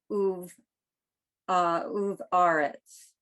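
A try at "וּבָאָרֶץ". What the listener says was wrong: No, there's a vowel under the V.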